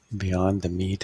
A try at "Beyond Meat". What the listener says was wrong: You know, I hope you understand that it's not beyond the meat. It's beyond meat. People should pronounce this stock properly.